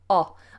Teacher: my mouth is very round inside it's like you could put a marble or a big ball inside my mouth and it would hold the shape of round a round shape